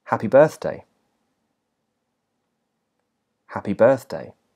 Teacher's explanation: in the whole phrase that is the main stress that's the the highest point of pitch throughout the whole phrase is on the word birth · in the first word, the ha is stressed, and in the second word, birth is stressed, and in the whole phrase, that is the main stress.